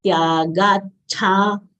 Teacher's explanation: Cha is Mahapran letter. We should exhale while saying cha.